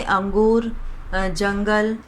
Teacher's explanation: इसमें ध्वनि नाक से निकलती है, जिसे अनुस्वार कहते हैं